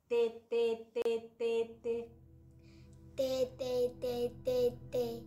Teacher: cuando dices t la t apunta en el sitio correcto Solo que la lengua no vibra con la t es el punto articulatorio falta la vibración entonces seguimos Tere Tere